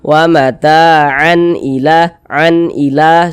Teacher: Hamzah kan termasuk daripada huruf izhar halqi kan, maka ini hukumnya izhar halqi, sehingga ini dibaca jelas, bunyi tanwinnya dibaca jelas. Kemudian dia dibaca pendek, tidak berdengung, dibaca jelas dan tidak berdengung. Karena dia tidak berdengung, maka jangan ditahan suaranya, baca pendek saja.